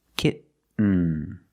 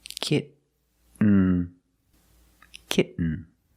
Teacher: You do the stop T, kit. You don't release, and then you fall to an N, kitten. When you make the stop T, the tongue is up, almost in the N position, so you don't have to change much.